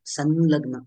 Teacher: जर ल हे व्यंजन आले तर अनुस्वाराचे उच्चारण हे न प्रमाणे केले जाते